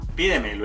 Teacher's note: El acento está en una sílaba anterior a la antepenúltima.